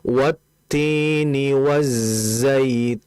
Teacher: isim yang di mana isim ini masuk kategori lam takrif sehingga kalau ada za setelah lam mati maka langsung diidghamkan, langsung dimasukkan. Makanya di lamnya itu tidak ada sukunnya tapi di zainnya ada tanda tasdid.